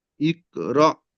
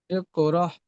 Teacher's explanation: এই রটা একটু ঝাটকা দিতে হবে, র, র বলে হঠাৎ থেমে যেতে হবে